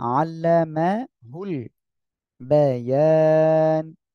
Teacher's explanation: মাশাআল্লাহ, আল্লামাহুল বায়ান, জবরের বাম পাশে খালি আলিফ মদের হরফ, এক আলিফ মদের পরে এখানে অক্ফের কারণে সাকিন হচ্ছে, তাই তিন আলিফ টেনে পড়বো।